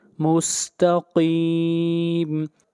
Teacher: قاف بھی حروف استعلاء میں سے ہے، قاف کو موٹا پڑھا جائے گا